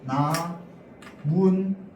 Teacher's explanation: 나무라는 소리랑 잎이라는 소리에 니은 소리가 덧나는 겁니다